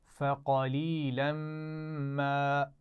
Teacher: فقلیلا ما یہ دونوں ملا کر پڑھ جائیں گے اور میم پر غنہ بھی ہو رہا ہے